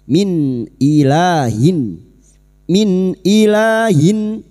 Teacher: Maka bunyi nun sukun dibaca jelas tanpa mendengung.